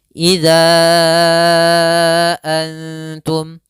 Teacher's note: Maka kita namakan dengan mad jaiz munfasil, panjangnya boleh kita panjangkan 4 harokat atau 5 harokat.